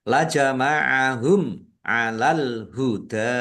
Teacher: Mim sukun bertemu dengan huruf ain. Bacaan idhar safawi dibaca jelas.